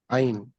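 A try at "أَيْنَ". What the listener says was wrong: और ये आइन नहीं है, ये है आईना। अनचेंजेबल है, याद रखिएगा। आईना विल बी ऑलवेज आईना। सही है, आईना। आईना, अनचेंजेबल।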